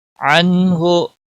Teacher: नून साकिन के बाद हुरूफे हल्की का हरफ हा आया है, इसलिए नून साकिन पर इजहार होगा। इस इजहार को इजहार हल्की कहते हैं।